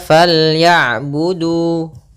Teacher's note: Panjang huruf du adalah dua harakat. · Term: mad thabi'i